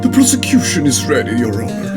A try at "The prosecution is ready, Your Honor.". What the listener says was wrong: Nah, it should be more high-pitched. The prosecution is ready, Your Honor.